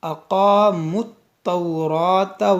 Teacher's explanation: اس میم کو تا سے ملائیں گے، اسی واو یا الف یہ سب نہیں پڑھیں گے